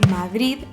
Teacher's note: es la variedad de Madrid donde hay una D muy suave al final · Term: fricativa aproximante